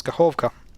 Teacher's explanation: And here emphasis is on O, so it's Kakhovka.